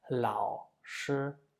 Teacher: the first syllable 老 has the third tone, and the second syllable 师 has the first tone. So if I want to pronounce the whole third tone on 老, it will be very difficult to switch and follow with the 师 in the first tone.